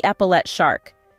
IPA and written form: ɛpəlɛt ʃɑːrk (epaulette shark)